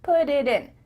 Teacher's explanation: the time to let the air come out of your mouth your tongue is just tapping the top of your mouth